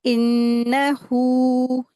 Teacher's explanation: नून मुशद्दद है, गुन्ना करके पढ़ेंगे, और हा को दो हरकत खींच के पढ़ेंगे